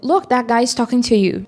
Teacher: O T pode sumir.